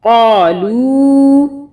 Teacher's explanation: اب یہاں پہ چھوٹی مدہ آ رہی ہے تو لو کو ہم ذرا سا کھینچیں گے 3 الف کے برابر